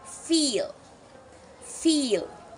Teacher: This sound is produced with a smile and the tongue high and towards the front of the mouth. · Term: E sound